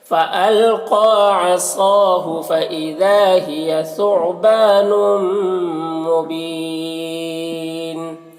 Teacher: ثعبان با میں الف مدہ ہے، ایک الف کے برابر کھینچیں گے. نون میں ادغام ناقص ہوگا، غنہ کے ساتھ میں پڑھیں گے اور یہاں پر وقف کی صورت میں مد عارض وقفی ہوگا، تو اس طرح سے پڑھیں گے.